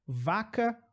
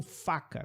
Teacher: A diferença é o som na garganta. Vaca tem garganta, faca não tem garganta. Com a boca você faz a mesma coisa.